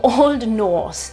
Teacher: che si chiama Old Norse. Non pronunciamo Norse, pronunciamo Old Norse. Vedete che non pronuncio la R?